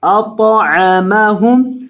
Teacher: حمزہ زبر طا کو موٹا کریں گے. طا موٹے حروف میں سے ہے اور طا کو ہلائیں گے کیونکہ طا حروف قلقلہ میں سے ہے.